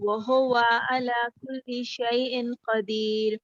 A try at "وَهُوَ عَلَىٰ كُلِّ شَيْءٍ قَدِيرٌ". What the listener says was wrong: اچھا اب یہاں اعلیٰ پہ عین کو اور ٹھیک کرو. وَهُوَ عَلَى كُلِّ شَيْءٍ قَدِيرٌ.